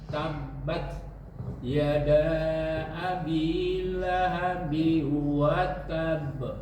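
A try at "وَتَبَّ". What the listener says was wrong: Watab, tahan. Watab, jangan langsung dilepas. Watab, enggak. ada tasydidnya. Watab ada tasydid.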